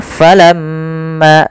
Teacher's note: ada gunah di lafal mim dan wajib kita tahan dahulu sepanjang dua harakat.